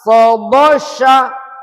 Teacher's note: pengucapannya tebal. Anginnya banyak yang keluar.